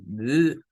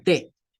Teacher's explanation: la D, es una consonante vibrante y la T es una consonante sin vibración. Para hacer la D, eso mantenemos aquí un sonido.